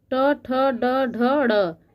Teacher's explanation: ड ढ ड़ यह पांचों वण मुर्धन्य ध्वनि कहलाती है क्योंकि यह हमारे मुह के मुर्धा के स्पर्श से उच्चारित होती है इसलिए इसको मूर्धन्य ध्वनि कहते हैं